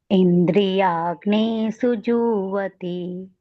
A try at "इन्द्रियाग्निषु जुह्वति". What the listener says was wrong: हाँ, इंद्रियाग्निषु बोला ना, तो ये नी बड़ा हो गया। इंद्रियाग्निषु जुह्वति। हाँ, बस इसको छोटी को छोटी बोलना है।